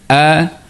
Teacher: Manakala untuk huruf hamzah kerongkong juga tapi dia keluar di bahagian pangkal kerongkong bawah sekali.